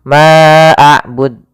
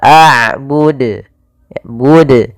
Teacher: Harusnya tidak boleh ditambahkan hamzah, tetap dijelaskan qalqalahnya.